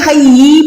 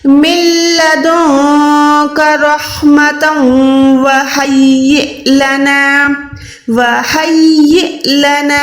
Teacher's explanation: ہم نے چھوٹے سے حمزہ کو جھٹکا دے کے پڑھنا ہے۔ میں نے آپ کو پہلے بھی بتایا کہ جب بھی حمزہ پہ سکون آتا ہے، بھلے وہ لمبا والا حمزہ ہو یا یہ چھوٹا والا حمزہ ہو، ہمیں دونوں جگہوں پہ جھٹکا دے کے پڑھنا ہے۔